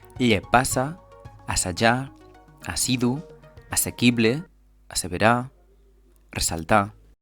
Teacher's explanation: La terminació íssim sempre té doble S i és sorda